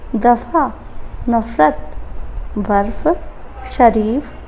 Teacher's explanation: इसके उच्चारण में होठ दांत को पूरी तरह स्पर्श नहीं करते हैं, बल्कि कुछ इस तरह से हल्का सा स्पर्श करते हैं ताकि हवा घर्षण खाती हुई बाहर निकले। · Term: दंत ओष्ठ ध्वनि